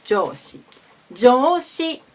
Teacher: Jo is low, O is high. · Jo is high, O is low. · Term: Japanese pitch accent